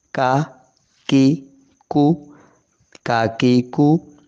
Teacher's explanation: زبان کی جڑ تھوڑا سا آگے منہ کی طرف آ جائے گی، سخت حصے کے ساتھ لگے گی تالو کے، تو باریک کاف ادا ہوگا، کاف زبر کا، کاف زیر کی، کاف پیش کو، کا کی کو، کا کی کو۔